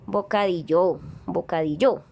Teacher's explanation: el acento en la penúltima sílaba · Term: sílaba tónica